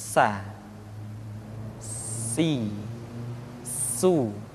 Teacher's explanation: Di antara sifat yang menonjol ketika kita mengucapkan huruf sa atau huruf sin adalah sifat as-safir, di mana ketika kita mengucapkan huruf sa ada suara tambahan yang menyerupai dengan suara belalang